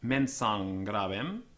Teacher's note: the M was probably assimilated to the following consonant, becoming ng before gutturals